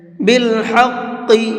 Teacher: حا کو حلق سے نکالیں گے اور قاف کو مبھر کے پڑھیں گے